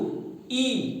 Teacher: आप देखेंगे पीछे के जीभ का हिस्सा ऊपर टच हो रहा है, तो वो होगा आपका तालव्य